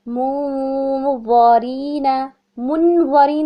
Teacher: اخفا تو ہوگا لیکن وتھ ہیوی غنہ ہوگا